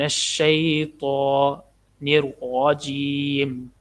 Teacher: تو کو موٹا پڑھنا ہے، تا نہیں ہے یہ، من الشیطان الرجیم، الرجیم، را کو موٹا پڑھنا کیونکہ را کے اوپر زبر ہے۔